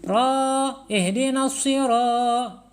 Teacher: Ya, panjang. Ro ini dibaca panjang, ya. Kenapa? Karena ro ini menghadapi alif. Ya. Ini namanya mad tabi'i.